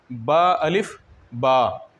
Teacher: با کا مخرج ہے جب دونوں ہونٹوں کی تری آپس میں مل جائے، یعنی جو اندرونی حصے ہیں ہونٹوں کے وہ آپس میں مل جائے تو وہاں سے با ادا ہوتا ہے۔ با کا مخرج ہے دونوں ہونٹوں کی تری کے ملنے سے · جب ہم پڑھتے ہیں با الف با، تو با پہ تو ہم نے تلفظ کر دی، لیکن جو الف ہے وہ منہ سے ایک ہوا نکل گئی اور الف ادا ہو گیا، یعنی یہ منہ کے خالی حصے سے ادا ہوتا ہے الف